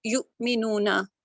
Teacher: یہ واو مد ہے, اس کو 2 کاؤنٹ لمبا کریں گے · نون کے اوپر زبر ہے تو اس کو لمبا نہیں کریں گے, ہلکا سا پڑھیں گے نا.